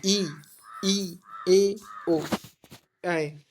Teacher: तो आप इनको बोलेंगे तो आपके जीभ के आगे वाला पार्ट कार्य करेगा, जिससे आप किसी चीज़ का टेस्ट लेते हैं ना, वो पार्ट काम करेगा, इसलिए इसे अग्र स्वर कहा गया है।